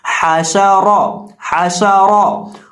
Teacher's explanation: ہم حا کو وسط حلق سے ادا کریں گے جس طرح ہم نے پچھلے حرف میں ادا کیا تھا، اور را کو پر کر کے پڑھیں گے کیونکہ را کے اوپر دبر ہے، اور جب را کے اوپر دبر ہو تو را کو موٹا کر کے پڑھتے ہیں، تو اسے پڑھیں گے حاشا را حاشا را۔